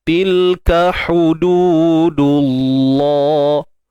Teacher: Untuk huruf kaf, okey, baris atas ka macam biasa, dan yang saya kuningkan ni dalam ni adalah kepala huruf kaf sendiri, bukan huruf hamzah. Baik, untuk ha pedas macam biasa, sempitkan bahagian tengah kerongkong, kemudian dua harakat ma asli.